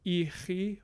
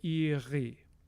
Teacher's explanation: voiceless uvular fricative, ch, gets voiced in between the two vowels